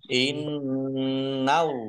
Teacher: nun tasdid dibaca gunnah atau mendengung, biar tampak dengungannya maka harus ditahan kurang lebih 2 harokat. Allahnya dibaca tebal karena harokat di depannya fathah.